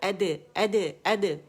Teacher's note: اور قلقلہ جو ہے باریک ہوگا